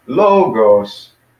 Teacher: logos, two syllables with logos, and the accent is on the first one, not the second.